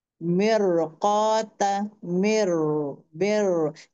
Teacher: रॉ साकिन उसके पहले कसरा है लेकिन उसके बाद वाला हैवी लेटर है, इसकी वजह से इसको हैवी पढ़ा जाएगा।